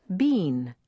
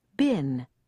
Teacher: Many people want to pronounce it been, but in standard American English, it's been, with a short I sound.